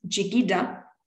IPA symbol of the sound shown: ʤ